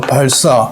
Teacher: 이거는 한국 사람은 한자어든 아니든 단어를 알기 때문에 보면 다 된소리로 발음합니다. 하지만 법칙은 한자어 받침 리을 뒤에 요 예사 소리도 된소리로 발음한다